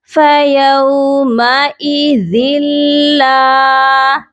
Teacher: ہم یہاں پر ادغام کریں گے، ادغام کا مطلب ہوتا ہے ملانا۔ ہم نے یہاں صرف ملانا ہے لیکن بغیر غننے کے